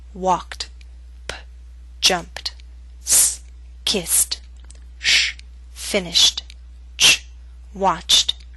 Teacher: pronounce the e d ending as t after voiceless consonants